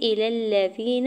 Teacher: حمزہ کی زیر کو بغیر کھینچے ہوئے ادا کرنا ہے